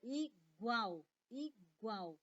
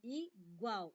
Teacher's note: esse L tem som de U, tem som de vogal. Nesse caso aqui, ele vai ser uma semivogal, tá?